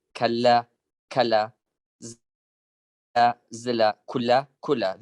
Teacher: the voiced alveolar lateral is phonemically geminated in Sorani Kurdish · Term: phonemic gemination